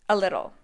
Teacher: a little is also linked to sound like a single word a little the stress is on the second syllable the T's